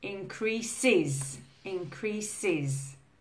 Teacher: So increases is the is sound. All the other verbs end in a z sound.